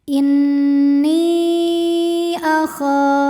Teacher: Mad tabi'inya ya sukun didahului kasrah pada kata inni, hamzahnya a pada kata akhafu. Maka nun dipanjangkan boleh 4 boleh 5 harokat. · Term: mad jaiz munfasil